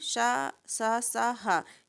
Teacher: ऊष्म व्यंजन शा सा सा हा, ये महाप्राण में आते हैं